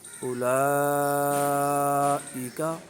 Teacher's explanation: اولئک اس طرح پڑھنا ہے، اولئک لام کے اوپر مد متصل ہے، لہذا اس کو دراز کریں گے